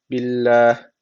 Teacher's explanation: Allah lafzı burada ince okunması gerekiyor. Çünkü öncesindeki harfin harekesi altta.